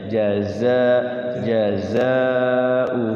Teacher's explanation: kalau yang Za itu kayak ada desisnya ya